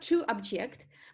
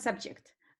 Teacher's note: in corresponding verbs the stress is on the second syllable